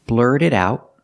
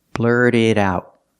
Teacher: We see the T in blurt is a fast D, and the T in it is a fast D.